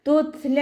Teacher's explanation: ത സുക്കൂനിലാവുമ്പോൾ കുറച്ച് air pass ചെയ്യണ സൗണ്ടിൽ വേണം ഉച്ചരിക്കാൻ കേട്ടോ. തുത്ല ലാമിൻ്റെ കൂടെ അലിഫ് സോയറ വന്നു, 2 കൗണ്ട് നീട്ടിക്കൊടുക്കുക.